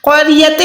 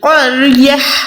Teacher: گول تا کو ہم نے یہاں پر ہا ساکن میں کنورٹ کرنا ہے